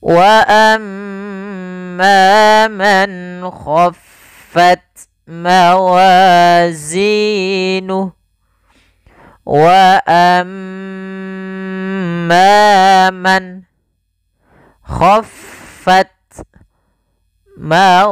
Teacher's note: ada mim tasydid, bacaan gunnah, yaitu suaranya menahan dulu suara nya sepanjang 2 harakat